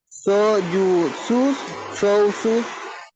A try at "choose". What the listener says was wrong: No dije chose, dije choose. Choose carefully. Repeat.